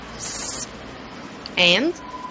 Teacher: both sounds are voiceless, but the difference is in the place of articulation.